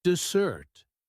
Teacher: dessert has the stress on the second syllable